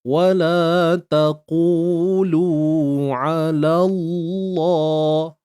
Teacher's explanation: Jadi untuk lam pada kalimah Allah ni perlu dibaca tebal.